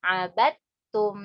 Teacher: Dari ujung lidah menyentuh pangkal dua gigi seri atas. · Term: dal sama ta